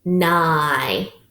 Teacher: Now it's open, so long I.